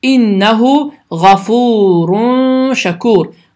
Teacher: Şəkkur iki saniyə miqdarında uzadılır, səs burundan çıxır və dilin ucu yuxarı kəsici dişlərin damağına yaxınlaşaraq tələffüz olunur. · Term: ixə qaydası